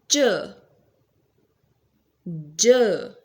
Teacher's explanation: post-alveolar, when tongue just touch behind the alveolar ridge.